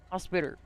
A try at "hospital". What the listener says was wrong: It's an L. So if you pronounce L's with R's, how do you say my name?